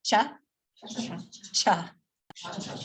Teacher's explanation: So we aspirate it a little bit